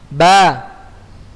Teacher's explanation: Ba itu ya berada di syafatan, kedua bibir ya.